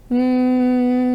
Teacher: you can feel vibrations when you hum that means that the voice is on